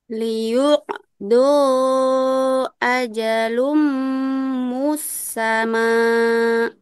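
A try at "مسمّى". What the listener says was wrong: Musamma. Saya nggak bertasdid, jadi musamma.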